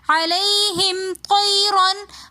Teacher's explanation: طیرن میں یائلین ہونے کی وجہ سے ہم نے اس کو جلدی سے پڑھا اور نرمی کے ساتھ پڑھا